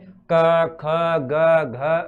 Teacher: इस क वर्ग पूरे को बोलते समय अपन है जो कंठ का उपयोग करते हैं